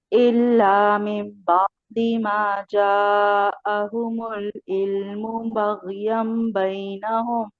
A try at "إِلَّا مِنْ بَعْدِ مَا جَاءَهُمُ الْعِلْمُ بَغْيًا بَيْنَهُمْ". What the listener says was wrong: بارك الله فيك